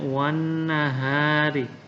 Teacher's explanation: wan nahari itu juga gunnah, ada nun yang bertasydid